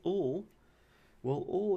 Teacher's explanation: we could call ol the voiced alveolar lateral liquid